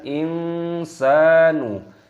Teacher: bertemu dengan huruf syin hukumnya dibaca ikhfa ikhfa itu artinya samar maka disamarkan